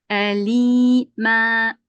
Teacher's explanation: iki üstün yerine bir elif miktarı uzatılarak yapılır. Yani unun sonundaki nun düşüyor. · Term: Meddi ivaz